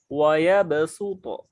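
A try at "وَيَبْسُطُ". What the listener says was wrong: Su. Tipiskan.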